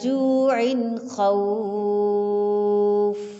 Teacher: عین منون ہے، اس کے بعد حروف حلقی میں سے حرف خا ہے، اس لیے اظہار حلقی ہوگا